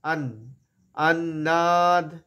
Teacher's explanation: না ন সব দাঁতে এসে লাগবে